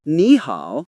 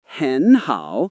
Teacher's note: When two third tones are next to each other, the first one usually changes into a second tone in real spoken Chinese.